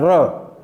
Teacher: र का उच्चारण स्थल जो है वह र जो है तालु से लुढ़कता है। र थोड़ा सा तालु से चिपकता है, फिर आगे की तरफ लुढ़क जाता है, र। इसलिए इसको लुंठित व्यंजन बोलते हैं, लुंठित।